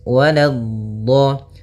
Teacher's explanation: la-nya jangan sampai tebal, jangan waladdo, tapi la-nya tipis